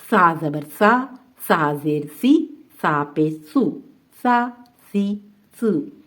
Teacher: बारीक पढ़ना है और नरमी से पढ़ना है और इसको सीन से नहीं मिलाना। सीन सख्ती से पढ़ा जाता है, सा नरमी से पढ़ा जाएगा।